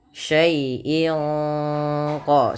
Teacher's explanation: suara tanwin pada lafal in disamarkan ke huruf qaf, yang mana qaf termasuk huruf ikhfa. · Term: ikhfa hakiki